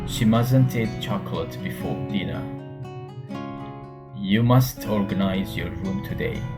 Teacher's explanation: We link the T to the next word when it starts with a vowel.